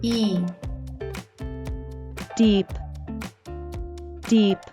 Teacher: The double E is pronounced as the long E sound, which we produce by making our mouth wide, like a smile, while our tongue touches the sides of our teeth.